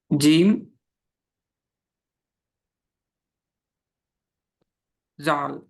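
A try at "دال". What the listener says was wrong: దాల్. చుక్కుంటే జాల్ అయ్యేది, చుక్క లేదు కదా, దాల్.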